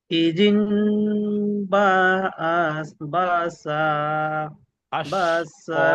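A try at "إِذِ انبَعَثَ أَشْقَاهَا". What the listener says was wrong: আচ্ছা, এখানে দেখেন, এখানে নুনটা উচ্চারণ হবে না, এখানে মিম পড়তে হবে, যেটা ইকলাবের কায়দা। ইজিম পড়েন। ইজিম বাসা আশকাহা।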